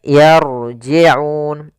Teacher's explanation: Ra-nya di sini ra tafkhim, ra tebal, tafkhim.